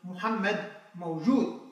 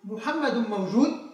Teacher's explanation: عندما نقول محمد موجود أصبحت الآن الجملة خبرية، لكن عندما نقول محمد موجود أصبحت الجملة استفهامية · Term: التنغيم